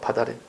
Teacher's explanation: 밭 티읕이 대표음 디귿으로 바뀌어서 넘어가